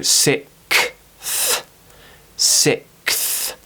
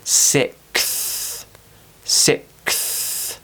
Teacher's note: you have to go from the k to then pushing your tongue between your teeth and releasing the th sound.